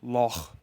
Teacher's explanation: It is a gravelly sound produced at the back of your throat.